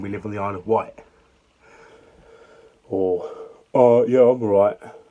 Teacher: most people on the Isle of Wight, lose their T sounds.